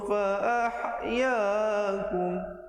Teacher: Di situ ha pedas. Jangan baca fa'ah. Kalau fa'ah jadi ha simpul, ha besar.